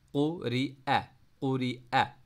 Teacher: قاف کو موٹا پڑھیں گے، ری چھوٹا پڑھیں گے، حمزہ کو لوئر تھوڑا سے نکالیں گے